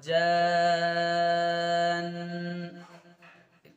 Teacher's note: जन नून का गुन्ना करके स्टॉप करेंगे आप। فَبِأَيِّ آلَاءِ رَبِّكُمَا تُكَذِّبَانِ كَأَنَّهُنَّ, यहाँ पर नून पर तजदीद आ गई तो यहाँ पर गुन्ना करेंगे, आवाज़ को नाक में रोक के रखेंगे।